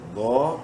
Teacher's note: ضا کو بولڈ بھی کرنا ہے اور ایک الف برابر لمبا بھی کریں گے کھڑی زبر کی وجہ سے.